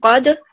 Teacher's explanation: there is dal with skoon, which is qalqila, and so we will vibrate it